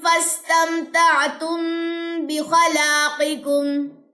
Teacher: میم ساکن کے بعد با آ جائے تو میں نے یہاں پہ کیا کیا؟ غنہ کیا